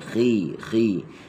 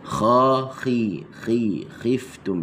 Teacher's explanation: dia bersifat dengan tafkhim nisbi bila dia berharakah kasrah